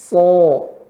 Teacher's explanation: Ke O kan Pak, suaranya naik ke atas ya.